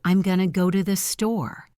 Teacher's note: The words going and to blend together to become gonna.